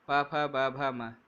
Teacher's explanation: प, फ, ब, भ, म, इनका उच्चारण स्थान ओष्ठ कहलाता है। आप देखेंगे भी सही, बिना होठों को मिलाए हुए, बिना ओष्ठों को मिलाए हुए आप प का उच्चारण नहीं कर सकते।